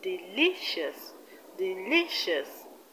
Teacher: In the word delicious, the stress is on li, which is the second syllable from the end of the word.